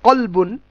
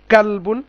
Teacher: কাফের একটুখানি সামনের দিকে, আর কফ হচ্ছে একটু পেছনের দিকে। কফটা ভারী উচ্চারণ আর কাফটা হচ্ছে হালকা উচ্চারণ